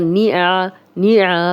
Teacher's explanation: اب عین پہ زبر ہے تو نی آ نہیں کہنا، آ کہیں گے تو حمزہ بن جائے گا